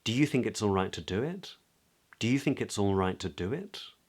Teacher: at the end because it's a question we would use an upward inflection